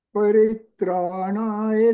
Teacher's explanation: tongues should touch the ಮೂರ್ ಧನಿ